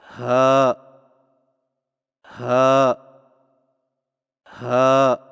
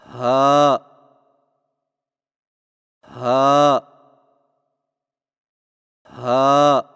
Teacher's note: ہا کی ادائیگی میں زبان کی جڑ کو حلق کی طرف دبائے بغیر باریک اور بغیر رگڑ کھاتی سانس میں پڑھیں